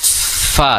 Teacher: ujung gigi seri atas bertemu dengan bibir bawah Fa disertai dengan hembusan nafas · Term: huruf Fa